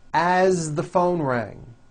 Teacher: As, you pronounce it with a voiced Z.